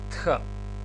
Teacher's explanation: Тхета е една аспирирана беззвучна согласка дентал, Т, значи со еден здив Х, Тх, и ја читаме, значи, Тх.